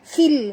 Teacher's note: bunyikan lam ini mati, tongkatkan lidah ke langit. Fil bahri, dan ha itu ada ha pedas, bah, jangan sebut bah, sebut bah ya.